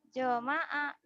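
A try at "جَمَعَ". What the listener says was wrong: Nggak ada yang panjang. Zoma'a. Zoma'a. Nggak ada yang panjang kan?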